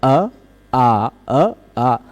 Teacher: आ बोलने में थोड़ा सा ज्यादा खुल जाता है है ना यद्यपि इन दोनों का उच्चारण स्थान एकक है कंठ कंठ से ही सीधे इसका भी उच्चारण होता · आ बोलने में जीभ ऐसे फ्लैट खड़ी रहती है, सीधी, है ना। और आ दोनों बोल लेते हैं, बोलने में उच्चारण स्थान नहीं बदलता पर प्रयत्न बदल जाता है, प्रयत्न बदल जाता है ना। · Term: दीर्घ अवर्ण